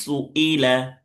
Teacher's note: সুই, ইয়া হয়ে যাচ্ছে তো, ইয়া হওয়া যাবে না, হামজা উচ্চারণ করতে হবে, হামজাজের ই। এই ইটা ভালো করে উচ্চারণ করতে হবে, ই, হামজাজের ই।